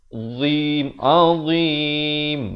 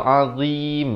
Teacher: Ujung lidah itu mesti keluar. Azim, azim, baru betul. Kalau azim, lidah duduk di dalam mulut, itu tak betul. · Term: huruf dhad